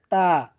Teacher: তা হরফটি আমরা জিহ্বার আগা সামনের দুই দাঁতের গোড়ার সঙ্গে লাগিয়ে উচ্চারণ করব, তা। তো তা হরফটি আমরা জিহ্বার আগা সামনের উপরে দুই দাঁতের গোড়ার সঙ্গে লাগাবো, এরপর সুন্দর করে উচ্চারণ করব, তা।